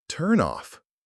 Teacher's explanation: If you say turn off, it sounds choppy. In reality, the N sound in turn links to the off in off. It sounds like turn off.